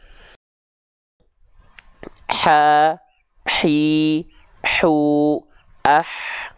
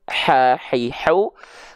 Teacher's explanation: H kecil kan dia mengalir nafas. Dia hams tapi kadarnya mengalir nafas.